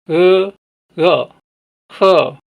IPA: h